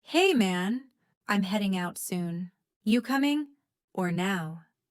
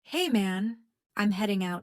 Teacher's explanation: Notice the dropped G in heading and coming